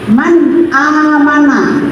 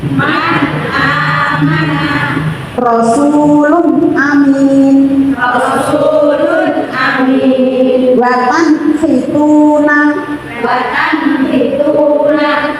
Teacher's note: Ini ada nun sukun bertemu alif, maka nun sukunnya dibaca jelas. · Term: idhar